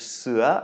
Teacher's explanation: starting off with sua, which means tiger, a rising tone there